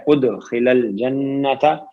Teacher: وَأُدْخِلَ الْجَنَّةَ دال پہ ساکن ہے، دال حرف قلقلہ ہے. ادخل الجنت نون پہ تشدید ہے، غنہ ہوگا